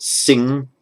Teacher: through the nose though not the mouth as we're pronouncing these the air has stopped from coming out of the mouth but it's going through the nose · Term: nasal